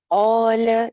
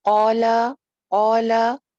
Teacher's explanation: الف ایک الف لمبا اور زبر جو ہے وہ آدھا الف لمبا